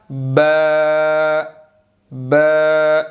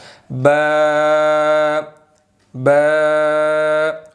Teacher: ऊपर वाला होंठ और नीचे वाला होंठ ये आपस में मिलेंगे तो बा अदा होगा। ठीक है, तो अब ऊपर वाले होंठ और नीचे वाले होंठ को हमने नरमी से मिलाना, सख्ती से नहीं मिलाना।